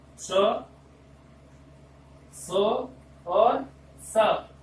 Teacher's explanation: ये तीनों तरह के शकार, इनका जो उच्चारण का प्रयत्न होगा वो विवार, श्वास, अघोष